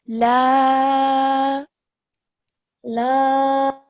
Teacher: Okay, you read that really nicely, but just this first lam, it has the alif has a madda on it. Okay, so this mad means that we have to elongate the sound for about 3 to 4 seconds